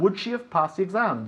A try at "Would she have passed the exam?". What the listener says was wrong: Would she have passed the exam? Would she have? No decimos have. Would she have?